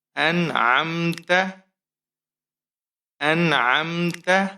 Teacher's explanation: اس لیے نہیں کیا کیونکہ نون ساکن کے بعد حروف حلقی میں سے جو حرف ہے عین وہ آیا ہے، اس لیے ہم نے یہاں پر اخفا نہیں کرنا